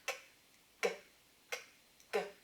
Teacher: which are velar plosives made with your velum or your soft palate